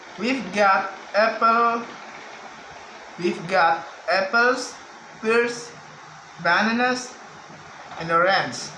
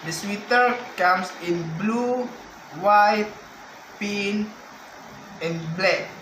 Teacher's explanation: In this type, intonation fall on the last item to show that the list mentioned is finished. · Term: Combining intonation in list